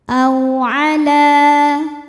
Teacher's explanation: La, mad thobi'i muqaddar karena huruf lam berbaris fathah panjang. Maka dibaca panjang lam-nya dua harokat